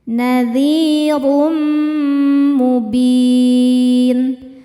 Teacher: Cara bacanya tanwinnya masukkan ke mim kemudian tahan. Dengungkan. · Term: idgham bighunah